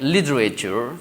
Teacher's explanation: that's l i t e r a t u r e so the first T we uh sound as D sound